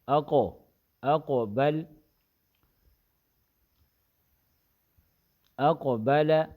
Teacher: حمزہ قاف زبر اقو، با زبر ب، اقو ب، لام زبر ل، اقو بل، قاف میں صفت استعلاء ہے، زبان کی جڑ اوپر اٹھتی ہے تالو کی طرف اور قلقلہ ہوگا